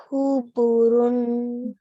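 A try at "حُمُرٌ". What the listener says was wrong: So mu, it's meme. Humurun.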